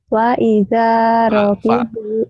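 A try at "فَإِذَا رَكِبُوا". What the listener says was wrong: Bukan wa tapi fa, fanta. Fa idza rakibu.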